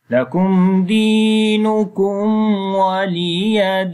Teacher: In this ayat, lakum, on the meme, there is meme sakin, and after the meme sakin, the next letter is dal, which is izhar shafawi. We make the clear sound of meme. Di, we long here due to ya madda.